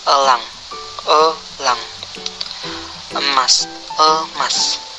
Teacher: Vokal E. Vokal tengah, sedang, tak bundar, semi tertutup